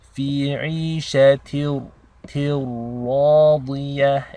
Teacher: It's called assimilation. Basically your ta is connected directly into the ra, as if the tanween is dropped. So there is no noon sound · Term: idgham